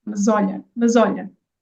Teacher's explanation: And you did put it together because I combined it, and I combined it because again we have two vowels and the s sounds like a z